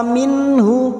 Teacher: nun sukun bertemu ha idhar halqi sama dengan ini kita baca jelas tanpa mendengung